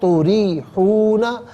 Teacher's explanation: تریحون میں را کے نیچے زیر ہے، را کے نیچے زیر ہے تو اسے باریک پڑھیں گے